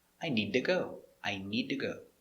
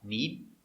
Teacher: we're gonna make a stop d where you put your tongue up and stop knead then we make another d where you release i need